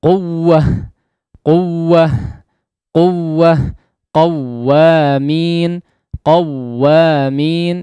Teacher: Ada peninggian suara sedikit dibanding huruf setelahnya ataupun sebelumnya. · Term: tekanan suara